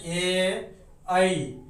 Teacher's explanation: कंठ और तालु की मदद से इसका उच्चारण होता है, तो इसीलिए इसे हम लोग बोलेंगे कंठ तालव्य वर्ण।